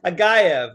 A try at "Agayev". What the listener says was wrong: No, Agaev is how his name is pronounced. You were like Ajigev.